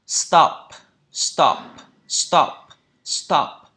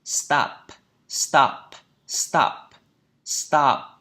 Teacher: thay vì là cái âm O ngắn này thì nó chính là cái âm A dài